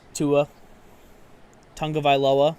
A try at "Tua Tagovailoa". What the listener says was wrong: Where are you getting an N from? It's Tagovailoa. Yeah.